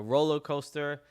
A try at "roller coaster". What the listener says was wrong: it sounded like you said rolo and i was like this guy just invented a new thing